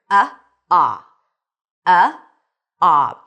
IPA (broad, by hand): ɑ